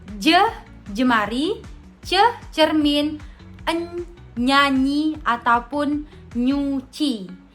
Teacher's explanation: lidah bagian tengah sebagai artikulator aktif ketemu dengan langit-langit keras sebagai artikulator pasif. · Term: konsonan Mediopalatal